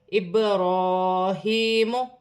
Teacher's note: با ساکن ہے، حروف قلقلہ میں سے ہے، قلقلے کے ساتھ ادا کیا جائے گا،